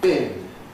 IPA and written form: bɪn (bin)